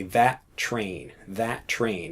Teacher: now we remove the T because that's how we pronounce it in English to keep things nice and short